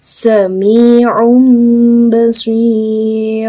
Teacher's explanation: nun sukun diubah menjadi suara mim sukun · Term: iqlab